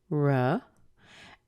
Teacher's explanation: with a long I so it's like this I and then the oh in here is reduced to a schwa so we get R uh and then we have our little